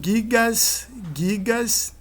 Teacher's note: E reparem que o nominativo singular com o acréscimo do S, ele produz a queda da dental T e produz também a queda da nasal n. E para compensar a queda da nasal n, alonga-se a vogal anterior, que é o A, no caso.